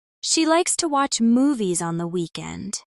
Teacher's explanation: Stress is on likes watch movies and weekend.